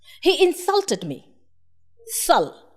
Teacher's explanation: I stressed on the syllable sul. So insult has 2 syllables, in and sul.